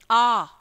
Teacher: आ को बोलने में मुख सबसे ज्यादा खुलता है। आप किसी छोटे बच्चे को कोई चीज खिलाते हैं या दवाई देते हैं, हम लोग देते हैं ना, तो कैसे बोलते हैं, आ कर, ऐसे बोलते हैं ना, आ कर। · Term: विवृत